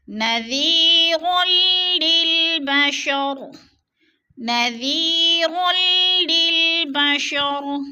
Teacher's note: را کو لام کے ساتھ ملا کر ادغام کرنا ہے۔ را دو زبر لام مشدد تو ادغام ہو رہا ہے، سختی سے جمع کر پڑھنا ہے۔ · نذیر للبشر، نذیر، یا ساکن سے پہلے ذال کے نیچے زیر ہے تو یا مدہ ہو رہا ہے، یا مدہ کو ایک الف دو حرکات کے برابر ہم نے کھینچ کر پڑھنا ہے اور را کو لام کے ساتھ ملا کر ادغام کرنا ہے۔